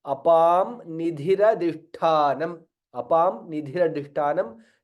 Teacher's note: Apam Nidhira Dishthanam. Anuswara joins with Nakara and becomes additional Nakara. Apan Nidhira, there is the two na there, and Dha is Mahaprana, Adhishthanam, Dha is Mahaprana, Tha is also Mahaprana.